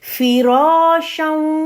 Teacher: را موٹا ہوگا اور ڈبل کاؤنٹ ہوگی، ڈبل لمبی آواز ہے یہ